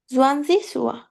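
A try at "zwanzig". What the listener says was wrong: জোয়ানজিস না, সোয়ানসিস, সোয়ান। হ্যাঁ, এটা অনেক ভুল হচ্ছে, এটাই এটাই ধরবে তারা, ঠিক আছে। পরীক্ষায় আপনি এটা ভুল করবেন না, ঠিক আছে। এই আজকে বারবার সমস্যা হচ্ছে, দেখা দিচ্ছি সোয়ানসিস, ঠিক আছে।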